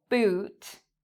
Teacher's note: So again, a circle, your lips are in a circle, boot, and it's a long word or a long vowel sound.